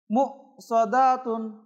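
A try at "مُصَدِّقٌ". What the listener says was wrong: হ্যাঁ প্রথমে দালটা একটু দীর্ঘ হয়ে গিয়েছিল হ্যাঁ বলেন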